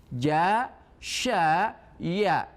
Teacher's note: makhraj wastul lisan di tengah lidah, yaitu paralel dengan langit-langit atas. Huruf yang dikeluarkannya adalah jim, shin dan ya.